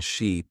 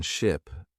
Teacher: Try to notice the long sound in sheep and the short sound in ship.